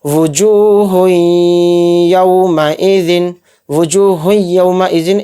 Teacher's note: واو پیش وو، جیم واو پیش جو، وجو، ہایا دو پیش ہوئیں، وجو ہوئیں، یا واو زبر یو، میم زبر ما، یوم، حمزہ زیر ای، یوم ای، ذال دو زیر ذن، یوم ایذن، وجوہ یوم ایذن، ہاں کے اوپر تنوین ہے، تنوین کے بعد یا آ رہا ہے تو اس میں ادغام کا قاعدہ ہو رہا ہے اور یہاں پر ہم غنہ کریں گے یعنی تھوڑی دیر آواز کو روک کر چلیں گے۔ وجوہ یومئذ، وجوہ یومئذ، ایک دم اس کو نہیں پڑھیں گے، یہاں پر ہمیں ادغام کرنا ہے یعنی غنہ۔